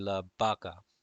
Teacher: the V is going to make a sound of B a little bit